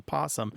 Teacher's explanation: it's easy to lose that o because that that first syllable is unstressed so that o defaults to awah or an O and it